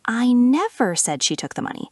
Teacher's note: Stress on never, there was absolutely no such statement.